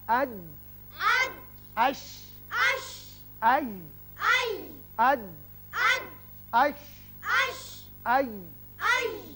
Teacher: زبان کا درمیانی حصہ جب سامنے والے تالو کے درمیانی حصے سے لگتا ہے، چپکتا ہے، تو یہ تینوں حروف ادا کیے جاتے ہیں